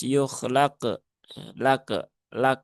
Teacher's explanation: Membaca qf sukun dengan tipis